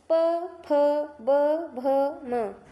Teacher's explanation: जब तक आप अपने ओठ को एक दूसरे ओठ से नहीं चिपक के बोलेगा तब तक प का फ का ब का भ का म का उच्चारण अच्छे से नहीं हो सकता है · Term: प वर्ग